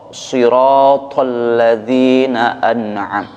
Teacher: to-nya ini merupakan huruf yang sifatnya isti'ala dan istibaq, meninggi dan bulat gitu, tebal.